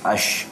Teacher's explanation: kita sebut Shin tu bersembur sikit berhamburan sikit udara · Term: tafasi